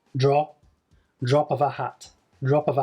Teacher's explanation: you've got two schwa sounds then they are linked together and when you say them it's almost like the final consonant moves to the beginning of the next word